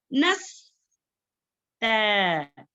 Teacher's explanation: त जो है बारीक पढ़े जाने वाला हुर्फ है, इसको जो है मोटा नहीं पढ़ना।